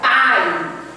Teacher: o A ele tem um som mais forte, ele é pronunciado com maior intensidade. E o I é uma semivogal.